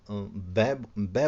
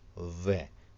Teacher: बिहार में और यूपी में भी इसमें इस वर्ण को वै की बजाय इसको बै बै बोला जाता है, बै से ही वन में इस प्रकार से बोला जाता है, जो कि वो क्षेत्रीय प्रभाव है। · पूरी वर्णमाला में अकेला एक ऐसा वर्ण है जो एक अकेला उच्चारण स्थान लेकर के बैठा हुआ है, दंतोष्ठ। दंत और ओष्ठ की सहायता से बोला जाता है व